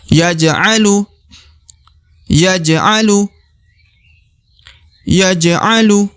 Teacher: huruf ja yang mati atau sukun berada di tengah maka dibaca qolqalah ya dibaca e pantul ya tipis-tipis saja karena berada di tengah